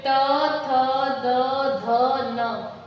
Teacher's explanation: फिर त, थ, द, ध, न, ये दंत से। आप उच्चारण करके देखिए कि जिह्वा हमारी दांत को स्पर्श करती है।